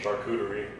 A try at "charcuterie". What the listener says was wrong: No Q sound. Charcuterie.